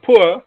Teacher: the glide begins just above the half closed position it's a back rounded position just above the half closed and moves in the direction of